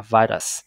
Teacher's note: Nguyên âm U không được nhấn chuyển về E.